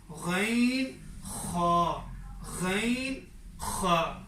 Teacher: غین اور خا میں یہ کفنگ ساؤنڈ ہے، خا جیسے کفنگ ساؤنڈ ہے